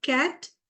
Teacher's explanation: it is voiceless, velar, plosive